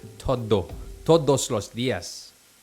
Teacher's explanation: If you don't say the D strong enough on the T-O-D-O-S, todos, it sounds like to them you're saying toro. It sounds like T-O-R-O to them, so you have to really make sure it's todo, todos los días. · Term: strong D's